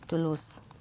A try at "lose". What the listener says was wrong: Más z, lose, lose. To lose.